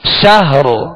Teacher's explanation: خیر من الف شہر. را کے مخرج پر آواز اور سانس توڑنا ہے، یعنی را کو ساکن کر کے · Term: وقف